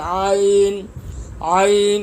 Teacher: را زبر را، فا زبر فا، رفع، عین زبر ع، رفع، عین زبر ع، عین کی ادائیگی حلق سے ہوگی